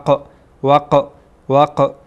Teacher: قاف در اینجا قلقله میشه، تکان میخوره، یک تکان میدیم